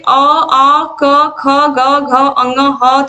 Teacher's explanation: कंठ से अ आ क ख ग घ अंग ह तथा विसर्ग का उच्चारण होता है